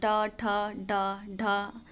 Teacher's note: जीभ के ऊपर मुर्धा से बोलते हैं इसको